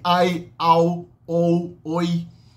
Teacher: Tipicamente um ditongo é feito com uma vogal central como A, uma vogal média como E, O, e a periferia do ditongo, a parte mais fraca do ditongo é feita com o I e com o U, justamente porque são as vogais de menos sonoridade